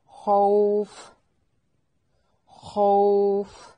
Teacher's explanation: خو خا کو موٹا ادا کرنا ہے، واو لین ہے. وقف کی صورت میں مد کرنی ہے